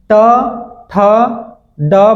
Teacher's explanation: हमारी जीवा कहाँ, मूर्धा पे स्पर्श कर रही है